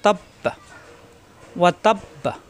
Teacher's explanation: অক্ফ হলে লাস্টের হরফে সাকিন হয়ে যায়, বায়ে সাকিন হলে বা সাকিন কলকলা হয়ে যাবে